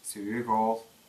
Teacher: Сюк ол. Взрывная К переходит в щелевую звонкую переднюю Г